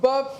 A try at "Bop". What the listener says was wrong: c'est pas B-O-B, c'est B-O-P. Donc Bob.